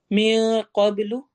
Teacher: नून की आवाज को छुपा के पढ़ना है, लंबा करके पढ़ना है। क़ब, कॉफ मोटा होगा।